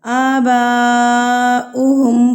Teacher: تو اس مد کو کہتے ہیں مد متصل یعنی کہ بڑی مد. اس مد کو ہم 4 حرکات کے برابر کھینچتے ہیں. اور اس مد کی پہچان کیا ہے کہ اس مد کے فوری بعد اسی حرف میں، اسی ورڈ میں، اسی کلمے میں یہ والی حمزہ آئے گی.